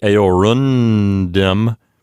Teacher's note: when my mouth starts to make the n sound my tongue is right there where it needs to be to articulate the d that comes next so aorundum is not very hard to say so that's why